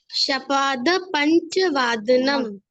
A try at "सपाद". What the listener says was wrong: नहीं श नहीं सपाद पंचवादनम सपाद स सपाद बेटा स बोलते हुए हमारी जो जीवा है ना वो दांत को छुएगी। सपाद। हाँ सपाद